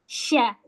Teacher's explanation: Dia enggak pakai bibir, tapi pakai lidah bagian tengah. Jadi bibir ini enggak enggak ikut campur. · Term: huruf syin